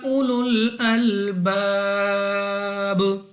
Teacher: Next ہمارے پاس الف سے پہلے زبر الف مدہ ہے، 2 سیکنڈ تک نہیں بلکہ جب وقف کریں گے تو با ہمارے پاس ساکن ہوگی. ایک تو با پر ہم نے کرنا ہے قلقلہ، اور دوسرا یہاں پر 3، 4 یا 5 سیکنڈ تک مد عارض کی وجہ سے کھینچ کر پڑھا جائے گا.